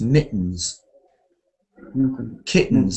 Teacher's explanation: we don't usually hear a t